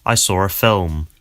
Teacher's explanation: So you can hear that there's an R sound connecting saw and ah. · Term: intrusive R